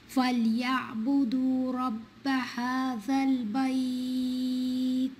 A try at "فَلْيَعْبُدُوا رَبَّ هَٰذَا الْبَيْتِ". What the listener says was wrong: Yeah, this ayah is better, but also don't say ba. بيت it's بيت فليعبدوا رب هذا البيت